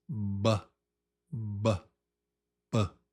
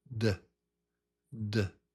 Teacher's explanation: One of them is B, B, and the other is D, D. One is lips, B, B, B, and the other is tongue on teeth, D, D. Very good.